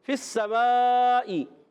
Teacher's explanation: فا اوپر والے دانت کے کنارے نیچے والے ہونٹ کے تر حصے سے ادا ہوتا ہے، فا یاد رکھنا ہے، سین سیٹی کے ساتھ ادا ہوگا، اور یہ مد ہے مد متصل، حرف مدہ کے بعد حمزہ اسی کلمے میں، فی السماء، تو حمزہ اسی کلمے میں آنے کی وجہ سے مد متصل ہوتی ہے۔